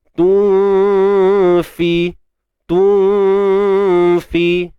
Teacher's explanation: Kita sembunyikan nun di sisi huruf fa. Dan huruf fa ni huruf yang nipis kan. Jadi dengung pun nipis. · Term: ikhfa hakiki